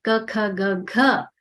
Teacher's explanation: ka, kha, ga, gha are kantavyaha because they come from the throat